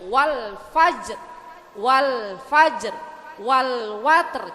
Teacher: Al-qomariyah. Jadi benderang lamnya itu tampak matinya Bu. Ya Bu ya, jadi maka harus dibaca jelas.